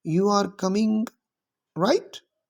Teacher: a rising intonation at the end of the sentence often indicates a questions.